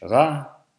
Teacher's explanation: In Danish, it's a uvular fricative or approximant at the beginning of the word. And at the end of the word, it's silent. But in its place, we can hear stød, the glottal stop or creaky voice that appears in some Danish words.